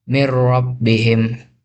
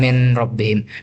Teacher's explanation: Ini terjadi jika nun sukun bertemu huruf lam atau ro. Cara bacanya adalah melebur total tanpa dengung · Cara membacanya adalah melebur total tanpa dengung sedikit pun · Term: melebur tanpa dengung